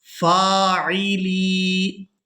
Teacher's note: लाम को या साकिन के साथ मिलाते हुए खींचकर अदा करना है, क्योंकि ये या मद्दा है। या साकिन हो और उससे पहले वाले हरफ के नीचे अगर हरकत ज़ेर है तो वो या मद्दा होती है और उसके साथ जो भी हरफ मिले उसे हमने खींचकर अदा करना होता है।